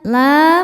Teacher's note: Sebab ada alif sebelumnya baris fathah. Dibacanya panjang dua harakat. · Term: mad thobi'i zohiri